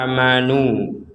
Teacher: Amanu kita baca panjang. Ada harokat fathah bertemu alif.